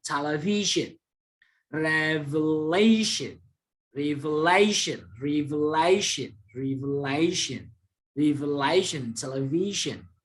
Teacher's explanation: Coba, television. Jadi sebelum sion ada V. Jadi V ini yang ditekankan.